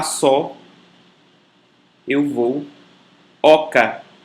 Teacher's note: Em seguida o O, com timbre provavelmente aberto, como no português avó, pó, farol, nódoa.